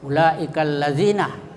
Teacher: Mad itu artinya panjang dan wajib itu harus, muttasil itu dalam bertemu dalam satu kata. Dan cara membacanya dipanjangkan sampai 2,5 alif atau 5 harakah. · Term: mad wajib muttasil